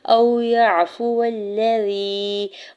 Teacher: واو ساکن سے پہلے حمزہ کے اوپر زبر ہے، واو لین ہو رہا ہے، نرمی سے موڑتے ہوئے ادا کرنا ہے، کھینچنا نہیں ہے